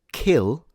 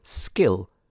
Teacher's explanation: the word kill, which is aspirated, and the word skill where the same K is not aspirated